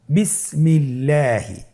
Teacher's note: আপনারা স্ক্রিনে দেখতে পাচ্ছেন একটি উদাহরণ দেওয়া আছে বিসমিল্লাহি আল্লাহ শব্দের দ্বিতীয় লামের আগে এখানে জের এসেছে আপনার জের দেখতে পাচ্ছেন এজন্যে আল্লাহ শব্দের দ্বিতীয় লামটিকে বারিক করে পাতলা করে পড়তে হবে আপনি যদি বলেন বিসমিল্লাহি তাহলে এই পড়াটি বিশুদ্ধ হবে না আপনাকে পড়তে হবে শুদ্ধ করে আমার আমার সাথে বলুন বিসমিল্লাহি আবার বলুন বিসমিল্লাহি আলহামদুলিল্লাহ খুব অল্প সময় খুব সহজে আমরা এই নিয়মটি শিখে ফেলেছি।